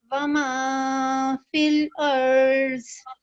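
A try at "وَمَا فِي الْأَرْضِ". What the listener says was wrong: You land on the raw a bit late. Yeah, just connect the alif and ra immediately. Just alif and ra were not joined immediately, but it's okay.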